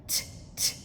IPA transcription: t